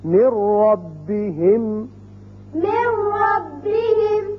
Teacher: را کی مثال نون ساکن کے بعد اب نون نہیں پڑھا جائے گا، میم را سے ملے گا